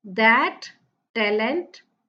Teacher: t sound is repeated in that talent